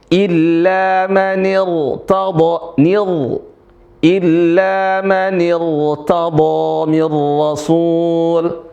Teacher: Ini huruf ro sukun sebelumnya adalah kasrah. Ya, maka di sini dibaca tebal.